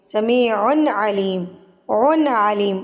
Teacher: तनवीन के बाद रूफ़ हल्की में से आइन आ गया, यहाँ पर हमने इजहार करना है